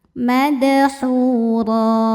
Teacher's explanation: hukumnya mad thobi'i zohiri karena ada wau sukun sebelumnya dah. Dibacanya panjang dua harakat. Madhuro. Huruf ro dibaca secara tafkhim karena barisnya fathah tanwin.